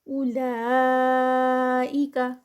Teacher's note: اولا میں جو ہے وہ 4 counts کا اسٹریچ آئے گا، مد ہے. عین کی ساؤنڈ اور لا 2 counts کے ساتھ. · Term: مد متصل